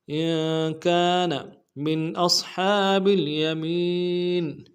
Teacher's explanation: إِن كَانَ مِنْ أَصْحَابِ الْيَمِينِ، میم کو نون ساکن کے سامنے لانا ہے، نون ساکن میں یہاں پہ اظہار ہوگا